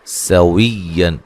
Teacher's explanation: सीन को बारीक सीटी से अदा करेंगे, वाह को या से सख्ती से मिलाएंगे, और ये नून तनवीन का इज़हार है।